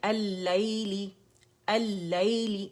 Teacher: اچھا یہاں پہ جو ہے ہمارا جو ہے وہ لام جو ہے وہ لام شمسیہ، یہ لام شمسیہ اور لام جو ہے شمسی لیٹرز کے اندر مرج ہو گیا، اس لیے یہ مشدد نظر آ رہا ہے